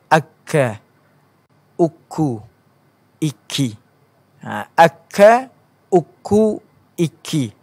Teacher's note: Pangkal awal lidah bertemu dengan lilangit keras. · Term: makhraj huruf kaf